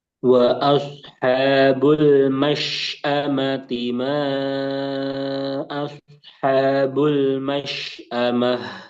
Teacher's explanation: Mas A-nya tadi kecampur sama ain